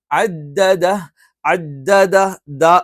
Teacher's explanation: നാവിന്റെ അറ്റം മേലെ മുൻപല്ലുകളുടെ മുരടിൽ ദ എന്നൊന്നും പറഞ്ഞിട്ട് എന്ത് ചെയ്യാൻ പാടില്ല മീൻസ് വായു പുറത്തേക്ക് വരാൻ പാടില്ല · ദ എന്ന് പറഞ്ഞാൽ നാവിന്റെ അറ്റം മേലെ മുൻപല്ലുകളുടെ മുരടിൽ.